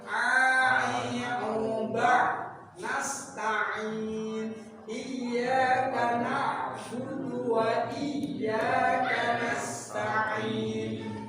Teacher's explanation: Aksol, pangkal, tenggok, keluarnya huruf hamzah sama ha di pangkal tenggok. Nah, keluarnya ain sama ha di mana? Tengah. Tengah-tengah tenggorokan.